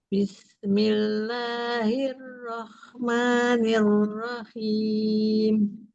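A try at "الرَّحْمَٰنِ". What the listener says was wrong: Masih ya, masih ke kho dia ya.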